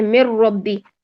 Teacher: نون ختم ہو گیا، بالکل نون ختم ہو گیا. مر، میم کو را سے ملا رہے ہیں، یہ ہوتا ہے ادغام تام.